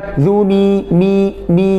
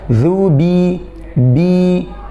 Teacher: Jadi bibir atas dan bibir bawah agak ditekan sedikit. Jangan berlebihan, jangan juga nggak ditekan, ya. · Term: huruf ba